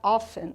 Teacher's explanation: lembrando que o often, pessoal, ele tem a pronúncia com esse T mudo, que a gente chama de silent letters em inglês.